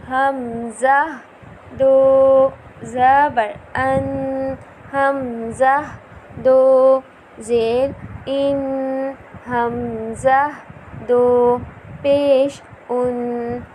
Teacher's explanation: حمزہ جو ہے وہ حلق کے نیچے والے حصے سے ادا ہوگا